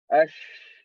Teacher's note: coming near or close, only breath, no vibration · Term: sheen